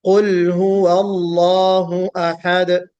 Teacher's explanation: अहद यहाँ पे दाल पर कलकला होगा। कुल हुवल्लाहु अहद।